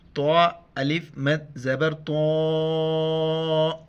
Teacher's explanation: تو کے بعد مد ہے، 4 الف کی مقدار کھینچنا ہے